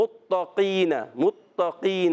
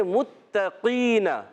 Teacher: تا کو باریک کرنا ہے، قاف کو موٹا کرنا ہے